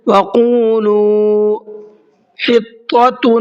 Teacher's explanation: طا کو منہ بھر کے پڑھنا ہے · وَقُولُوا قاف کو منہ بھر کے پڑھنا ہے اور ساتھ ساتھ ایک الف کی برابر کھینچ کر کے پڑھنا ہے، اور لام کو بھی ایک الف کی برابر کھینچ کر کے پڑھنا ہے، اس لیے کہ دونوں جگہ پر واو مدہ کا قاعدہ ہے، دونوں جگہ پر واو ساکن سے پہلے پیش ہے۔